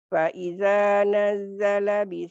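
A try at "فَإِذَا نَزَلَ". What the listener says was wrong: nggak ada tasdid. Faida nazala, nggak ada tasdid. Faida nazala. Pendek.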